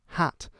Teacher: this kind of middle a sound that's further forward in the mouth